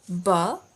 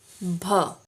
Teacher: One is light. It means no air. And one is heavy and it means extra air. That breath is called aspiration. · Ba and bha. The second one has the breath.